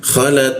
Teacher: Nah, la posisinya di bawah hidung, lalu masuk ke ta dia. Ta menggunakan ujung lidah ditempelkan ke gigi. Ada hembusan tipis, bocor tipis dia.